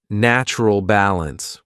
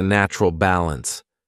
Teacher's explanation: her Rising intonation may have indicated that she hadn't finished speaking